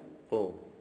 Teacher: Dua huruf yang pertama ini adalah qalqalah yang ada di rahang tebal. Bunyi qalqalahnya antara qaf, ya, qaf itu antara fathah dan dhammah. Kalau fathahnya qa, kalau dhammahnya ku, maka qalqalahnya qu.